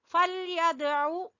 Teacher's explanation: दाल के ऊपर कलकला करेंगे